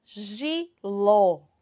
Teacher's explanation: a sílaba tônica vai ser qual aqui na palavra jiló vai ser ló certo que é onde tem o nosso acento agudo tá então